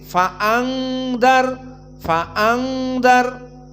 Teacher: pun murqqangarun Sakinah bertemu dengan dza maka hukmunnya adalah ikhfa dan ikhfa dari hukum gunah sehingga keluarnya dari khaisum dari hidung bukan dari mulut